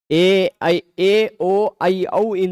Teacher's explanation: ए ओ ऐ औ चारों के उच्चारण स्थान में एक चीज कॉमन है वह है कंठ ठीक एका कंठ तालु ओ का कंठोष् ऐ कंठ तालु औ का कंठोष् चारों में कंठ कंठ है।